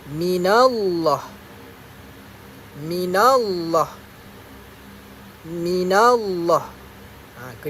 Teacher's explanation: perkataan Allah tersebut perlu dibaca secara tebal